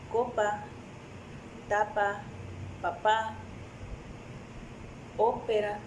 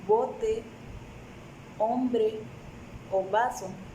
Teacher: La única diferencia entre estos dos es que en el sonido P las cuerdas no vibran, pero en el sonido B sí.